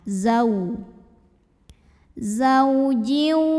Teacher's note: atas hurufnya adalah ee hukumnya adalah haru Lin atau huruf Lin karena ada wau sukun yang didahului baris fathah maka kita baca cukup dilembutkan atau dilunakkan